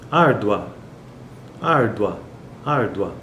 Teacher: esse a ele é muito mais forte do que o u por isso que ele é uma vogal e está no pico da sílaba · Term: ditongo crescente